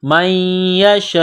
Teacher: نون ساکن کے بعد یا ہے، یا کے اوپر تشدید ہے تو یا کو دبانا ہے، میم کو یا کے ساتھ ملانا ہے، من یشاء، یہ لمبی مد ہے، 4 الف کے لمٹ میں کھینچنا ہے.